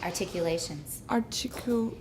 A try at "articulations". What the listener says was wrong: You have a lot of friction you don't need. And the other one was an N that I didn't hear clearly.